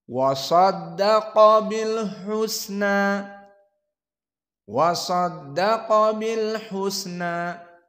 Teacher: wawu huna muraqqaqah. Adapun sadaqa fasa mufakhamah